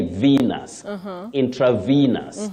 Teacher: That letter E takes what we call the long high front sound E.